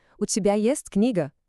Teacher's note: para fazer uma pergunta de sim ou não, a frase não muda nada. A única coisa que muda é a entonação da voz que sobe um pouquinho no final.